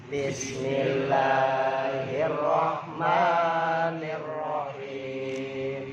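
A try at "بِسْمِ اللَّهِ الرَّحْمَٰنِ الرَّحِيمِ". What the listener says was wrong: Haknya yang bersih. Hirrah, bukan hirrah, ada haknya salah. Hak harus bersih. Bismillahirrahmanirrahim.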